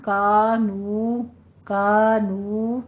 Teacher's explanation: کانو، کانو دونوں ہونٹوں کو گول کیجیے